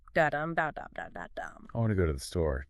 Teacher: But the main beats, the stress, falls on want, go, and store. The little words like or the are unstressed.